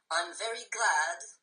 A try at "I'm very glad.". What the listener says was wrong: I'm very glad. No. I'm very glad. Extend the vowels. Don't try to bring them up high like this. Bring them out. You don't sound very glad. You sound depressed. Out.